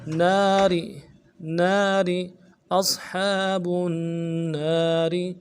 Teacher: نون کے بعد الف مدہ ہے، ایک الف دال میں کھینچیں گے، را کو باریک ادا کریں گے